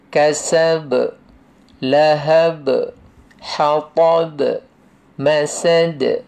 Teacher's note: Yang penting kalau kita matikan, dia ada detakan, ada qalqalah.